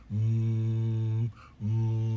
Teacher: the lips like the the sound for em mmm there your your vocal cords are are moving but the sound is constricted or stopped by the the lips and actually the sound comes out the nose